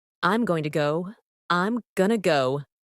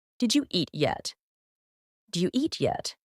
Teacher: notice how sounds get reduced or Blended going to becomes Gunna did you becomes do you